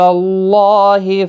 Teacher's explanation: اللہ کا لام کھڑا زبر کی وجہ سے کھینچا جائے گا 1 الف کے برابر، اور اس زبر کی وجہ سے پر بھی پڑھا جائے گا